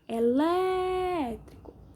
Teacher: Sílaba mais forte é o Lé, som aberto, acento agudo.